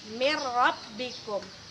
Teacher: idgham bilagunnah berarti kita tidak membacanya dengan dengung